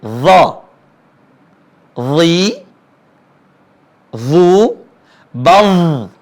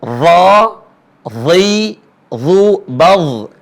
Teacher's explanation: ujung lisan ketemu dengan ujung gigi seri atas dan tebal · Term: huruf do